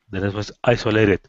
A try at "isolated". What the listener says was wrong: So you're emphasizing the I. Isolated.